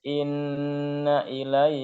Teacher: Inna yang pertama dengung tapi pendek